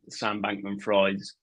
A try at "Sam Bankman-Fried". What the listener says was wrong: Is it pronounced fried? Surely it's Freed, man.